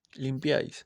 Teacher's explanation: las vocales i es una cerrada, la vocal a es abierta y la otra I sería una vocal cerrada, todas en una sola sílaba